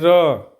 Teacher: र कंपन हो रहा है। लग रहा है जैसे कंपन हो रहा है। इसमें थोड़ा सा कंपन हो रहा है।